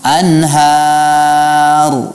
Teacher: ra dibaca mufakhamah, betul. Tetapi tidak perlu mengumpulkan bibir seperti seolah-olah kita mengucapkan dhammah, ya. Sebagaimana kita hendak mengucapkan dhammah, ya. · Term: tafkhim